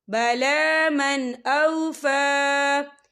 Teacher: فی الامیین سبیل وَيَقُولُونَ عَلَى اللَّهِ الْكَذِبَ وَهُمْ يَعْلَمُونَ بَلَى مَنْ أَوْفَى، یہ دیکھیں بلا من، یہاں نون ساکن ہے، نون ساکن کے بعد جو ہے حمزہ آ رہا ہے، اور حمزہ جو ہے حروف ہلکی کا ورڈ ہے، تو ہم یہاں اظہار کریں گے، اور ہم اسے بنا غننے کے پڑھیں گے